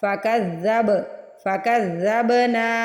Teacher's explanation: کذ، پھر زب، با کو ہلانا ہے، با پہ ساکن آ رہا ہے۔ فکذب، فکذبنا، نون کیا الف ہے تو نون کو کھینچ کے ادا کریں گے۔